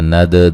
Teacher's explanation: دال کو ہلا کے پڑھیں گے، دال قلقلہ ہے